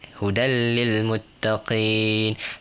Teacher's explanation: Dia pendek, idgham bila gunnah, 1 harakat.